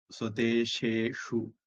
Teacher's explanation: முடியும் போது நாக்கு மேல அன்னத்துல நுனி நாக்கு ஒட்டி இருக்கணும். தொடங்கும் போது பல்லுக்கிட்ட ஷே தொடங்கி அன்னத்துல ஷூ ஷூன்னு முடிக்கணும்